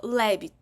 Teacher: наголос падає на першому складі ми робимо акцент на першому складі тому ось цей склад буде наголошеним так і ми малюємо зверху